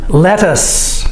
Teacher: this TT does not make the D sound we say it with the T sound and the C makes the S sound let us like let